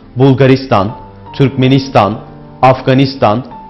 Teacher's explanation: İstan takısıyla biten yer adlarında da genellikle ülke isimleridir bunlar. Vurgu İstan takısına yani son heceye kayar.